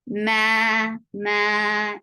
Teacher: Ma is 2 counts long. Alif sakna followed by fatha is a 2 counts long vowel.